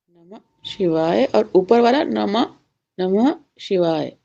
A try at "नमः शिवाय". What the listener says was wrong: विसर्ग में आ नहीं लगाना है।